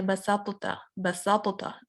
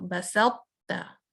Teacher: ता की जो हेवीनेस है वो रहेगी, कलकला इसका चला जाएगा और उसके बाद हम ता पे आ जाएंगे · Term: नाक़िस मुदगम